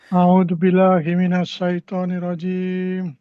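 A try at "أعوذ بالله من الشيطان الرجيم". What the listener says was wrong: Oh wait wait wait. Ee terlalu cepat tuh.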